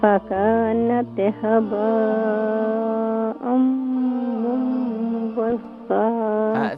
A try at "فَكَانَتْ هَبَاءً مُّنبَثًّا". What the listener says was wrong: ثا کو مزید سافٹ کریں اور اسے منبثا.